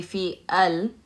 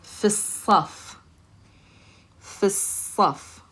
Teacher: the lam is never pronounced when you have a sun letter. We're going to connect that fi sound to the slad.